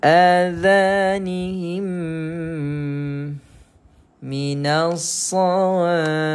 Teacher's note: Sebenarnya tiga-tiga nama ni memaknakan menuju kepada perkara yang sama, iaitu mim mati jumpa dengan mim. Cara bacanya adalah dimasukkan mim pertama ke dalam mim yang kedua secara sempurna. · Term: idgham mimi